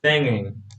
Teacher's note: So the final g, yes, the final g, or in this case, the velar plosive is not pronounced. The voiced velar plosive is not pronounced. In this case, you have it at the end of the first morpheme, at the end of the root.